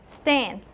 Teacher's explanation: But of course, when you're doing the stand in English, you don't do stay. You nasalize the vowel. So your EI is being contaminated with a little of a nasal quality.